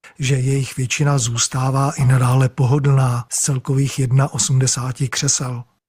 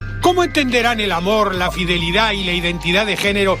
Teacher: comparado con el español, el checo tiene una melodía mucho más monótona